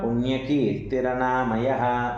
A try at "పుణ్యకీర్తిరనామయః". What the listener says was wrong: అనా వస్తుంది, మామూలు నా పలకండి.